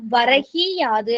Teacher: அந்த முதல் சொல்லின் இறுதியில் உள்ள கூ என்னும் எழுத்து கீ என்று ஒலிக்கிறது. அதுவும் முழுமையாக ஒரு மாத்திரை அளவில் ஒலிக்காமல் அரை மாத்திரையா குறைஞ்சு ஒலிக்கும். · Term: குற்றிய லிகரம்